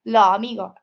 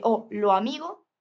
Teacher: pérdida o aspiración de la S final